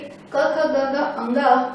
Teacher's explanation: कंठ से क ख ग घ अंगा प्लस अ आ और ह का उच्चारण किया जाता है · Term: कंठव्य